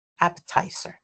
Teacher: appetizer tizer, yes appetizer. Yes, the stress is in tizer.